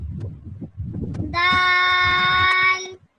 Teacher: दाल को ये पांच काउंट लंबा करेंगे